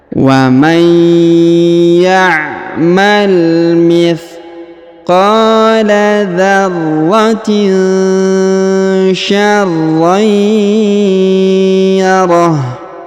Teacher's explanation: Huruf ha di ujung disukunkan atau dimatikan